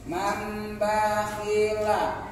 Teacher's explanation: Ada mimnya kecil ke bawah ekornya, oh berarti huruf tanwin dan nun mati yang di atasnya ada ini. Nah, berarti harus diganti nunnya, berubah menjadi huruf mim. Ya, suaranya, maka disebut dengan iqlab.